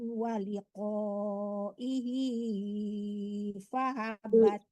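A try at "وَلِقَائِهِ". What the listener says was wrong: Bu, kepanjangan ihinya cuma 2 harkat ya Bu, terlalu lama Ibu ihinya ya. Ya, kepanjang.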